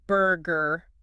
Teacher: unlike some other English accents Americans pronounce that R sound in every word